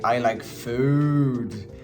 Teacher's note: The stress goes on the food because you want to focus on the food.